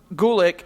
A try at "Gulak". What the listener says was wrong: It's Gulak, not Gulick. It's Gulak. You don't say it right.